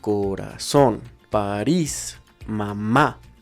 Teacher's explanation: tónica depende de ciertas reglas empecemos con las palabras agudas y como ya sabemos su acento prosódico está en la última sílaba